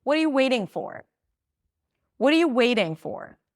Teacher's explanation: waiting is the verb. That's the word that is going to be higher in pitch. Waiting for what are you is going to be reduced.